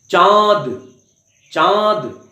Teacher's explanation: तो मुख से और नाक से दोनों से आप उच्चारण करेंगे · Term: अनुनासिक ध्वनियां